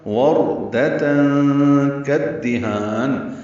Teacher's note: تا مربوطہ تنوین اور اس کے بعد کاف آنے کی وجہ سے اخفا ہوگا